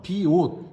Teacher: 시옷을 디귿으로 음절의 끝소리 규칙 대표음으로 바꿔줬네